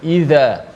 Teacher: huruf za yang kecil tu lah, yang hujung lidah mesti kita kena keluar sikit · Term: huruf zal